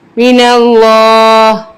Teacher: وقف کی صورت میں زیر امٹ ہو جائے گی اور ہا کی آواز آئے گی